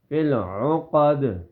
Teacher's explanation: عین کو گلے کے درمیان سے ادا کریں گے. اس کی اوریجنل آواز جو ہے، کیونکہ عین کے مقابلے میں الف بھی ہے، اور ان دونوں کی آواز میں فرق کرنا ہوتا ہے.